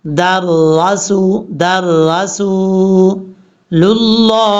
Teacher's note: محمد. در، دال کو را سے کنیکٹ کریں گے